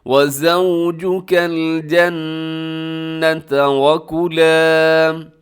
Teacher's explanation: وَزَوْجُكَ الْجَنَّةَ. الجنت میں کیا ہے کہ نون مشدد ہے تو آپ نے غنہ کرنا ہے، آواز کو ناک میں لے کے جانا ہے. وَزَوْجُكَ الْجَنَّةَ وَكُلَا.